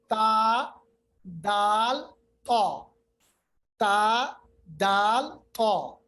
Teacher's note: زبان کی نوک کو یہ جو ثنایا علیا اوپر والے جو ہمارے دو دانت ہیں ان کے اندر جڑ کی طرف ملانا ہے